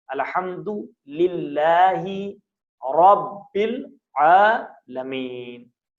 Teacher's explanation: رے کو تھوڑا موٹا پڑھیں، لاہ کو پتلا پڑھیں